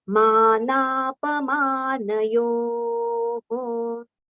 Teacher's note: Yo we have to prolong, and then the visarga sound ho we have to take quickly